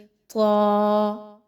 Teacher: اچھا، اس کی ادائیگی بھی طا الف ہے، تو ہم اس کو 2 حرکات کے برابر لمبا کر کے پڑھیں گے